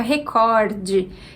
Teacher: Mas essa palavra já foi aportuguesada, e na versão que já está de acordo com a nossa língua, a gente tem o E final e a pronúncia fica recorde. E se o cor é a sílaba tônica, a gente tem uma palavra paroxítona